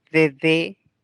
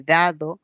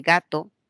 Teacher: Hay obstrucción, el aire no sale, hay un impedimento total, hay cerrazón total, entonces por ello se denomina oclusivas. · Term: consonantes oclusivas